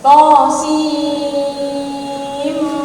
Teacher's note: Nun sukun ketemu dengan mim itu kan masuk ya, didengungkan. To, sin, mim, dengungnya 3 itu kan.